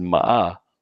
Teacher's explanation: if you said ma like high to low you're scolding somebody · if you said ma like third tone it's horse